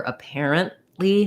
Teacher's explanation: we use a stopped t there which means your n is going to be very short and you aren't really going to hear that t you just stop the air stop short apparently and then release